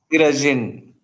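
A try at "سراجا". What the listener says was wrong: Sira. Look, there's alif there. How is it jin? Look. Sirajan. Okay, if you were to stop. No. With the fathatain, it is unique. Will you read the alif now? Siraja. Siraja.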